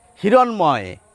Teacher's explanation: মূর্ধন্য ন কিন্তু দন্ত নয়ের উচ্চারণ পাচ্ছেন আর ময়ের উচ্চারণ পাচ্ছেন